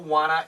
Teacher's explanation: Wana is want to but here the N cancels the t's